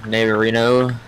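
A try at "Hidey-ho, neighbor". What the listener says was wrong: Well, not Reno, just neighbor. Heidi ho neighbor. No, it's Heidi ho neighbor.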